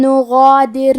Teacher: نغادر میں غین کی ادائیگی حلق کے اوپر والے حصے سے ہے. کیونکہ غین حروف التفخیم میں سے ہے تو ہمیں غین کو اور اس کے بعد مد الف کو دونوں کو بھاری آواز میں پڑھنا ہے.